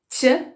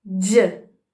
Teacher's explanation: O segundo, que é o j, é o vozeado.